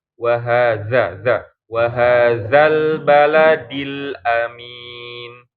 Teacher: Dza gesekan lidah sama gigi harus terasa.